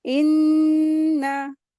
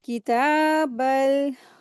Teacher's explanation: नून मुशद्दद है, गुन्ना करेंगे